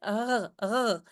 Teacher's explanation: Aujourd'hui, on accepte aussi un R, hein, on dit un R guttural, hein, ici derrière dans la gorge, un peu comme en français, mais plus doux. Donc vraiment tout léger, rr, rr.